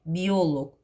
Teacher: bioloq, vurğu oya düşəcək, log qəbul etməyəcək